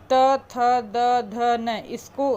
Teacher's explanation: हमारा जीभ जो है दांत से लड़ रहा है, तो ये जो वर्ग हो जाएगा ये दंत हो जाएगा।